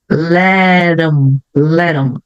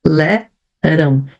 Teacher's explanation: E como eu tenho um T no final dessa palavra que vem antes, o som do T também pode ficar um som de R, daquele R fraco